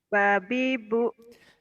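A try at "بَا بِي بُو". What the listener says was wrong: Nah ada yang panjang ya. Babi bu, babi bu, babi bu.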